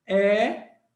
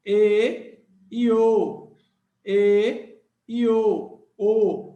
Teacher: aqui no Nordeste ele tem um som mais aberto a boca mais aberta